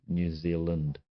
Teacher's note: Kiwis talk really fast, and we have interesting vowel sounds, like even the word, the name of our country, New Zealand. The land comes out as Lind